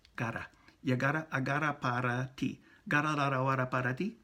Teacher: And for that R-A sound in Spanish, ra. The tip of the tongue is going to go up on the little rough ridge, just back from the teeth. And it'll tap it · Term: little tap